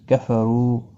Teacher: ایک الف کی مقدار کے برابر کھینچ کر پڑھیں گے کفرو رو پیش کی وجہ سے پر پڑھا جائے گا